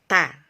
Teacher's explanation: Jadi kita menekan dulu ya, seperti yang terlihat pada gambar, menekan dulu lisan ini, ditekankan di sini dulu, ta itu sidah namanya, ditekan dulu baru kita ucapkan hurufnya. Jadi sidah dulu baru ta.